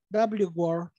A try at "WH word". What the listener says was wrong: W word or WH word? W-H. Yes.